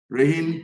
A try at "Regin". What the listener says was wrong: So it's my grandmother's name, and it's pronounced Regin. So it's got a soft G, Regin.